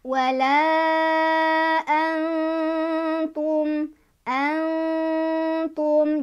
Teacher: Nun sukunnya dibaca samar sambil ada dengungan. Dan dengungannya dibaca 2, 3, atau 4 ketukan.